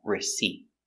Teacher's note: use a stop T put your tongue up